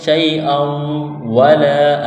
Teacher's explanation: تنوین کے بعد واو ہے، واو کے اوپر تشدید ہے، یہاں غنہ کریں گے، آواز ناک میں چھپائیں گے